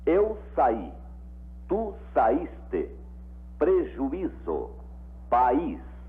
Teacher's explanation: O I dessas palavras é pronunciado separado da vogal que o antecede.